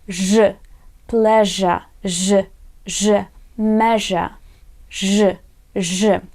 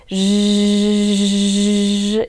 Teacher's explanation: this is a voiced consonant and it vibrates, yeah, when we pronounce it